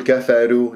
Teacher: الراء مفخمة لأنها مضمومة ولا أرققها بسبب ترقيق الكاف والفاء، أقول كفروا، لا كفروا، وخلص المرقق ومن المفخم كل واحد أعطيه حقه.